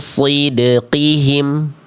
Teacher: dia disamarkan, didengungkan, tahan dua harakat dan tebal